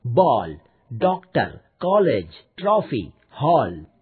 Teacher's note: इनमें से कुछ शब्दों में आ और औ के बीच की ध्वनि उच्चारित होती है। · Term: आगत स्वर